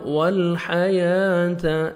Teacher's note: موت والحیات، لام کو اپنے ہلانا نہیں ہے، ہا کو اپنے مخرج سے ادا کرنا ہے، یا کو 1 سیکنڈ کھینچنا ہے، کھڑے زبر ہے. تا کو باریک پڑھیں گے.